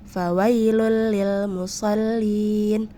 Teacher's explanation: Secara istilah, idgham bila gunnah berarti nun sukun atau tanwin bertemu huruf lam atau ra. Dibacanya melebur tanpa mendengung. Nah, itu tadi ya yang membedakan idgham bila gunnah dengan idgham bigunnah, dari hurufnya dan cara pembacaannya.